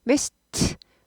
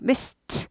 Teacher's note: 스드 울리지 않고 또 울리지 않고 안 울리고 스트 이렇게 돼요